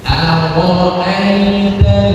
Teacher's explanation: Aro'aita, ya, rohnya tebal. A-nya tipis, A tipis.